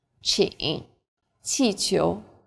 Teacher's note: Qi is like the CH in cheap, but again with a flatter tongue and a stronger puff of breath.